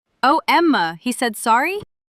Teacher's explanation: voice goes up at the end because she's asking a question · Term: rising tone